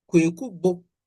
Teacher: the obo start with a low tone, and then the bo. So we have high, low, high sequence, and this gives us a personal name, Kweku Bo.